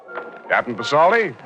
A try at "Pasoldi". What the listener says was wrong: P is silent, son, as in Prasad.